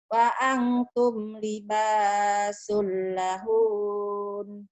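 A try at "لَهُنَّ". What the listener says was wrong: Kenapa jadi lahun? Kenapa panjang? Pendek. Lahun gitu. Tak ada yang panjang ya, jadi jangan dipanjangin. Bersisa tapi ujungnya. Lahun maksudnya yang saya maksud panjangnya di N-nya, di ujungnya.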